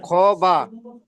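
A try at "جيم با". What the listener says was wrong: এটা খ কোথায়? এটা তো বা, এই জিম, এটা তো জিম, জিম বা। নিচে নোক্তা হলে জিম হয়, নোক্তা হলে খ হয়। হা আবার বললাম, ওটা খ নয়, নিচে নোক্তা হলে খ নয়, উপরে নোক্তা হলে তারপরে খ বলে, নিচে নোক্তা হলে তাকে জিম বলে।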